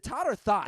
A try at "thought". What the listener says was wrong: it's thought. thought. Yeah, it's thought. You got to get that H in there. It's thought. No, it's thought. You got that H in there. It's thought.